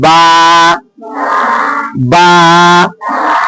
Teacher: तो बा का मखराज है दोनों होठ · ये निकलने की जगह, उसी को कहते हैं मखरज, है ना। तो बा का मखरज क्या हुआ, दोनों होठों की तरी वाला हिस्सा।